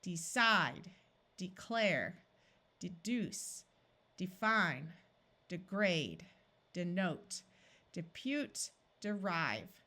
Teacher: most of the time when people are speaking quickly these long e sounds disappear and sound more like a short I because the first syllable is not accented and the second one